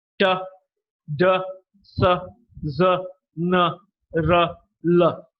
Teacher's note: the tip of the tongue touches the alveolar or the teeth Ridge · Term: alveolar sounds